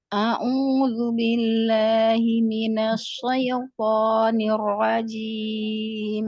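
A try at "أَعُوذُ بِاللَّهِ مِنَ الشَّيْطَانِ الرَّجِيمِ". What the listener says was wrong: Shinnya jangan seperti sod. Syai bukan soi. Syai bukan soi. Syaitanir rajim. Syai. Tebalkan lagi. Minasy syaitan.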